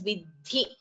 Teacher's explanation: Dha is Mahaprana and it is a short letter. So please do not prolong it as vidhi.